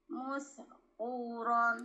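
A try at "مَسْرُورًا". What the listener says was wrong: Naikkan lagi, Bun. Maskuron tanggal lidah belum naik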